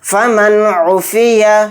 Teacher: عین اظہار حلقی کے 6 حروف میں سے ایک حرف ہے، تو یہاں پر بھی اظہار کا قاعدہ ہوگا. نون کی آواز کو ظاہر کر کے بلا غنہ کے جلد پڑھنا ہے